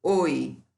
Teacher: Decrescente, porque oi, eu falo muito mais o ó.